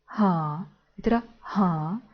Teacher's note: вимовляється з придихом не так дзвінко як українська г а трохи глухіший схоже на літеру х